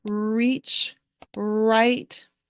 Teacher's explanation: the end of words when you say the r your um your tongue curls and kind of curls back your tongue is not actually touching any of your teeth when you're saying that R sound